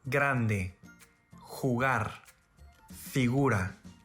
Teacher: the letter G is same as a typical English G sound, except that it's fully voiced